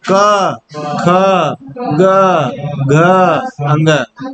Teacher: अब जब तुम कंठ से क का उच्चारण करते हो ना, तो कंठ के सबसे निचले भाग से क का उच्चारण होता है। उसके बाद ख थोड़ा ऊपर आते हैं, ग और ऊपर आते हैं, घ और ऊपर आते हैं, और अंग सबसे लास्ट में आता है।